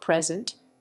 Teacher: it is usually used as a verb present with emphasis on the second syllable and is often accompanied by the preposition with consider the following